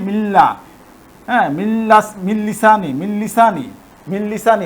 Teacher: এই নুনটা উচ্চারণ হবে না সরাসরি মিমটা লামে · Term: ইদগাম